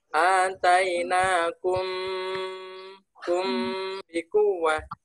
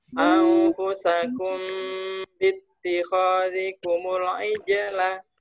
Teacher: dibaca dengan samar antara mim dan ba-nya dibaca samar